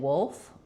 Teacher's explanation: the back of the tongue really lifts for that dark L, and then we don't lift in the front.